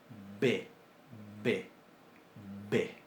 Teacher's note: Lo que en lingüística se llama bilabial plosiva sonora